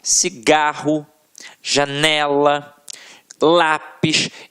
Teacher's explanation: a sílaba que a gente proferiu com mais força sempre esteve na penúltima sílaba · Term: paroxítonas